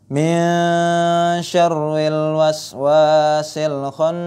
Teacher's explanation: Min syarril waswasil khannas. Syarri, ra-nya ra tipis karena berharokat kasrah